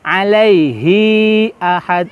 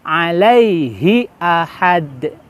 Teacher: jangan membaca hi-nya terlalu panjang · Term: pendek